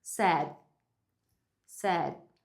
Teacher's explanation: Você vai colocar a língua na posição do D, mas você não vai soltar, não vai fazer o T.